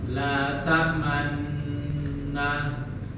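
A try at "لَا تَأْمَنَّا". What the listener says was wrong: Kurang lama.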